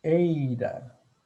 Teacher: Ei é um ditongo, onde eu tenho uma vogal mais uma semivogal. Se a vogal é tônica, a semivogal é átona. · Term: ditongo decrescente